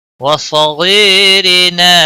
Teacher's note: را کے نیچے ہے، زیر ہے اس لیے باریک پڑھیں گے